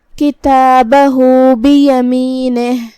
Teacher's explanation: ہا پہ الٹا پیش ہے مطلب یہاں مد صلہ صغرا ہے. ہم اپنی آواز 2 مد کے برابر لمبی کریں گے